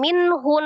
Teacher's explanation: ha adalah salah satu huruf dari tenggorokan ya bagian bawah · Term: izhar halqi